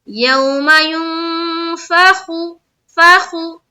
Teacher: यहाँ पर इख्फा का कायदा, नाक में आवाज को छुपानी है।